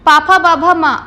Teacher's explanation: कोई भी दांत का, जीभ का कोई भी योगदान नहीं रहा, क्या रहा, सिर्फ आपके लिपसिंग हुई है ना। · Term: ओष्ठ्य